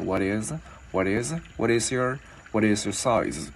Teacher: Chữ này chữ Y mình gắn sau vào là is. Và mình sẽ liên cái chữ T vào chữ Y thành chữ D tiếng Việt nhẹ